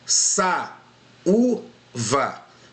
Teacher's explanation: Esse u, ele faz um hiato com a vogal anterior. · Olha lá, esse U faz um hiato aqui com uma vogal anterior. Então são 2 vogais, tá? Uma atrás da outra, porém em sílabas diferentes